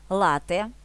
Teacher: вимовляємо з наголосом на перший склад